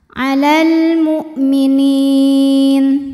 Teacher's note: Maka lam sukun dibaca dengan jelas atau disebut dengan idhar qomari. Alal hamzahnya kita tekan, ini punya sifat dari segi suara namanya syiddah ya. Suaranya tertahan.